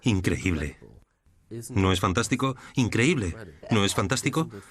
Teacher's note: Tienes una voz muy melódica tu voz sube y baja